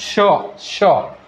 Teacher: तोंडातून जोराने उसासा बाहेर टाकला जातो, त्यामुळे घर्षण निर्माण होऊन उष्णता निर्माण होते, म्हणून त्यांना उष्मे किंवा घर्षक असे म्हणतात.